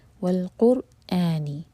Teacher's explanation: قر یہاں پر را ہیوی ہوگا اور اس کے بعد حمزہ کا کٹ آف ساؤنڈ کلیئر آنا چاہیے، قرآن نہیں ہوگا یہ، والقرآنی.